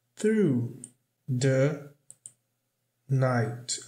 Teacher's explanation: Aqui ele não pronuncia o som do T.